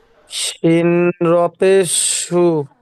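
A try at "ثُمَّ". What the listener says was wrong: জি না ওটা সিন নয়, ওটা সা, দেখে পড়েন জি। সা র পেশ, সা পেশ সু। জি না ওটা সা হবে, সা পেশ হবে।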